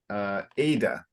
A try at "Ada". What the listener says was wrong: remembering that in English the emphasis is up front instead of Ada.